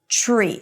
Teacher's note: So it's a ch sound, an r, and a high e.